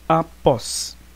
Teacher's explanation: O pós é a sílaba tônica, é a última, vamos classificar oxítona e vamos aplicar a regra de acentuação gráfica.